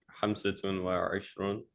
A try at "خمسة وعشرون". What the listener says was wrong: خمسة وعشرون. Try to make that kha clear. It sounds almost like a hamsatun, but kha with a scratch.